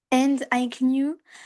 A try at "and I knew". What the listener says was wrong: Tu vois, prononce-le pas le K. Prononce-le pas. And I knew.